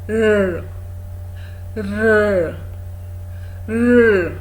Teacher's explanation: you can actually see that the tongue rises and rolls inwards. It rises and then it rolls inwards. · Now, when you want to articulate this sound, all you do is you raise your tongue, let it also touch your alveolar ridge, and then you don't drop your tongue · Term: R sound